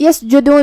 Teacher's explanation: کلمت یسجدون میں یہاں حرف الجیم ہے، جیم کو ہم زبان اور اوپر کے تالوں کے درمیان سے ادا کریں گے